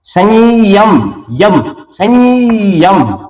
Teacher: अभी आएगा संयम यम संयम ये द्वितीय का आभास होता है लेकिन ये य डबल लिखा नहीं जाता लिखा यही जाता है उच्चारण संयम य डबल हमें महसूस होता है।